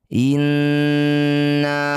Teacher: inna nun bertasydid disebut bacaan gunah musyaddadah harus dengung dua harakat